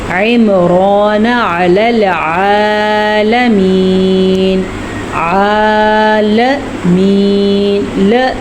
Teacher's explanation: لام زبر ل، اس سے لمبا نہیں کرنا